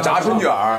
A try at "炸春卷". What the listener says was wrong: 你 这 个 一 加 卷 舌 音 以 后 ， 我 觉 得 这 种 不 对 了 。